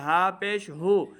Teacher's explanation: ہا حروف خلقی میں سے ہے اس کو حلق کے نچلے والے حصے سے ادا کریں ہا پیش ہو ہا کی آواز کو لمبا نہیں کرنا صحیح